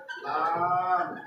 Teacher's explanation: জিব্বার আগার কিনারা সামনে উপরে দাঁতের মাড়ির সাথে লাগিয়ে